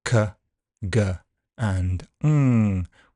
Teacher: And going further back, we've got the velar sounds, k, g, and ng, with the back of your tongue just touching that soft kind of part of the roof of your mouth at the back there.